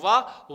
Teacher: वकार का मतलब वा का उच्चारण स्थान दंतोष्ठ होता है